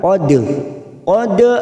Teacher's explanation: huruf q kita samarkan tiga harakat tqod Dal sukun qqala sugro karena mati di tengah kalimat jangan lupa dipantulkan